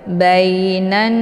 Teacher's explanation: didengungkan karena Nun yang bertasydid ini dinamakan dengan ghunah musyaddadah jadi cara bacanya ditekan kemudian ditahan sambil terbentuk suara yang mendengung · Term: ghunnah musyaddadah